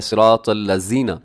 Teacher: آگے صراط الذین، اس میں بھی طا موٹا ہے، صاد بھی موٹا ہے، اسے صراط نہیں پڑھنا، صراط غلط ہو جائے گا، صراط الذین، طا کو اپنے موٹا پڑھنا ہے، صاد کو بھی موٹا پڑھنا ہے، اور آگے الذین، اس میں ذال کا خیال کرنا ہے کیونکہ اسے اکثر زا پڑھ دیا جاتا ہے